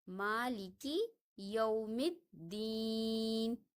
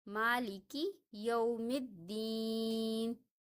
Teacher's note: جیسے یومی کے میم کو ہم دال کے ساتھ ملاتے ہیں، نہ الف کو پڑھا جاتا ہے اور نہ لام کو، کیونکہ دال حروف شمسی میں سے ہے، اس لیے ہم یہاں پہ پڑھیں گے مالکی یوم الدین۔ میم کو دال کے ساتھ پڑھیں گے، دال کے ساتھ ملائیں گے